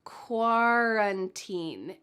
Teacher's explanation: Ooh, do you hear the sound at the beginning of this word? It sounds like a W.